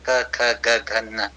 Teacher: कि उच्चारण का जो करण है तो वो पहला वाला जीहवा मूल है। तो जब आप क बोलेंगे तो आपके जीभ का पिछला हिस्सा जाके पीछे कंठ में लगता है · जिहवा का पश्च भाग या जिहवा का मूल भाग जो है वह पीछे कंठ में लग रहा है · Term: क वर्ग